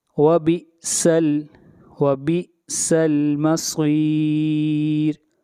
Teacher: صاد کو موٹا پڑھا جائے گا، صاد حروف مستعلیہ میں سے ہے اور را کو یہاں پر باریک پڑھیں گے۔